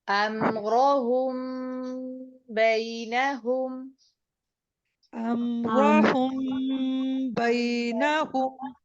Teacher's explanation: میم ساکن کے بعد اگر با آ جائے تو یہاں پر ہم اخفاء شفوی کرتے ہیں، یعنی کہ ہم غنہ کریں گے